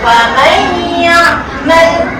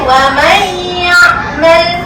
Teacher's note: Jadi bila kita baca tu wa may' dia masuk dalam huruf ya. Dengung tu masukkan dalam huruf ya.